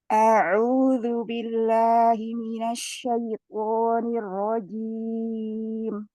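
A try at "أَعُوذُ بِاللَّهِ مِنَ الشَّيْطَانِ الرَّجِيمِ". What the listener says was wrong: A'udzu billahi minasyaitonir rajim. Minasya, coba diangkat di mina.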